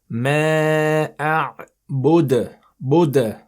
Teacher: if we stop on this letter, we will make a sound in the back of our mouths, echoing sound called the qalqala.